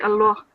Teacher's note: the lam in the word Allah would be pronounced with a thicker sound